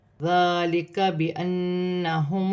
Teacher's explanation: نون مشدد میں غنہ ہوگا، نون مشدد کو اپنے سے پہلے حرف کی حرکت کے ساتھ ملا کر پڑھا جائے گا۔